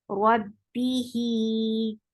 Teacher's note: Rab, make ra heavy attached with ba. Keep ba light and give kasra an e sound.